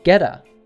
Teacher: this T is between two vowel sounds. It becomes an American T.